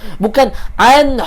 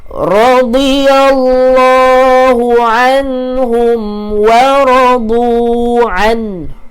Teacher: Sikit je. Bagi ada bunyi berangin sikit pada huruf ha.